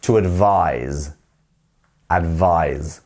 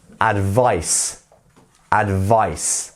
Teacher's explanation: the verb form has the z sound at the end